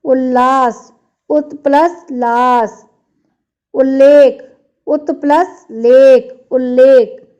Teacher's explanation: यदि ता या द के बाद ला रहे तो ता या द ला में बदल जाता है